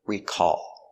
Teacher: Stress on the second syllable. Recall.